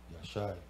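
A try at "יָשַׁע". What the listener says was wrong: Ah, see, you were pronouncing it Yasha. Yasha is a different thing than Yashai.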